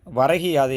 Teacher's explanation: முதல் சொல்லினுடைய இறுதியில் உள்ள கூ என்னும் எழுத்து கீ என்று ஒலிப்பதை நாம் இதில் உணர முடியும் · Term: குற்றியலிகரம்